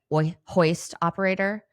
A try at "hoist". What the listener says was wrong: Did you just try to do a silent H? No, you went hoist operator. Hoist. The H is not silent.